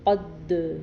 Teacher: قوف پڑی زبر دال ساکن قد۔ اب یہ دال چونکہ حروف قلقلہ میں سے ہے اس لیے ہم نے اس پہ قلقلہ کیا، یعنی قد ساکن کہا نا ہم نے۔